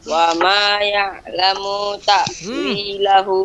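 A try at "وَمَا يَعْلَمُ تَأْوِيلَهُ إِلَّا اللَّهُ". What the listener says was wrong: Salah. Ya'lamunya munya pendek. Wa ma ya'lamu ta'wilahu illallah.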